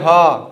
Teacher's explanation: स्वर यंत्रीय व्यंजन, स्वर यंत्रीय व्यंजन का मतलब होता है कंठ के भीतर, जो है गले से ही निकले। हा, हा में कोई चीज टच नहीं हो रहा है, वह कहां से, सिर्फ गले से निकल रहा है, तो इसको हम क्या बोलेंगे, स्वर यंत्रीय व्यंजन।